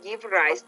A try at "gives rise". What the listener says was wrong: Don't forget the word gives rise. So there's kind of a Z. Now I know we don't really pause. It's gives rise. It's not gives rise.